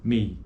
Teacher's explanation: É um ditongo decrescente por conta de que a acentuação, a proeminência acentual ocorre na vogal E, na primeira vogal.